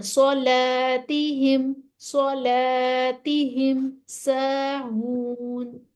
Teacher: سو سو سا نہیں، سلا نہیں کہنا، سو موٹا پڑھنا ہے، لام کو پھر باریک کر دینا